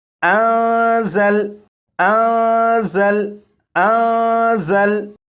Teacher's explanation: زا کو سختی سے پڑھیں گے، یعنی سیٹی کی آواز کے ساتھ